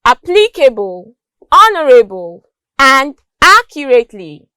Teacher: the first syllables of these words are pronounced longer and louder than the other syllables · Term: stress